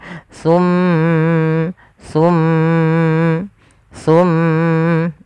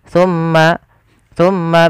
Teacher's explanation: ketika melafalkan mim sambil ditahan suara mimnya masukkan ke rongga hidung Tum Tum Tum ditahan dua harakat dan jangan langsung seperti ini